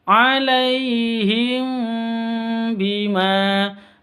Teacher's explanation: mim mati bertemu dengan ba cara bacanya samar didengungkan karena ini Ikhfa Syafawi